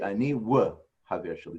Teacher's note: It actually is a w. In old Hebrew, in original Hebrew, it was like a W. It wasn't like a V.